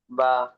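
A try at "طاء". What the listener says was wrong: বা নয়, তা, তা এর উপরে দুই নক্তা হয়।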